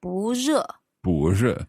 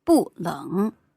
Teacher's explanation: you had 不热, it's not hot, because that's a second tone into a fourth tone, 不热. But when you're using 冷, which is the third tone, then the 不 stays as a fourth tone.